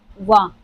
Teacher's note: और नौवां हमारा हो जाता है दंत ओोष् यानी दंत और ओष्ठ से दोनों से मिलकर उच्चारित होने वाले मैंने बताया था इसके पहले भी कि पूरे वर्णमाला में सिर्फ एक ऐसा है जो दंत ओष्ठ से उच्चारित होता है। वह है सिर्फ व।